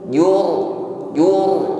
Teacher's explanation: ra sukun sebelumnya ada dhammah, maka di sini ra kita takrir, kita getarkan, namun getarannya tebal.